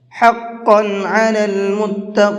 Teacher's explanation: حقا کے اندر قاف کو پر کر کے پڑھیں گے اور متقین کے اندر بھی قاف کو پر کر کے پڑھیں گے